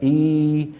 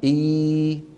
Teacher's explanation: والحرف الثاني إي اللي هي الياء المادية. إي من أين تخرج الياء؟ من وسط اللسان. قال إمامنا الجزري: والوسط فجيم الشين ياء.